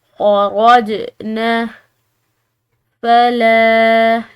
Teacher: اس کے بعد جو یہ جیم آ رہی ہے یہ حروف قلقلہ کی ہے، تو ہم نے اس کو ہلا کر ادا کرنا ہے. خرجنا فلا، لام کو ہم نے لمبا پڑھا کیونکہ اس کے بعد الف مدہ آ رہی ہے